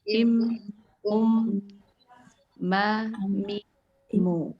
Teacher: Kalau mim harus ada gunahnya walaupun tidak gunah yang seperti bertasdid ya. Jadi im, ada gitunya dulu.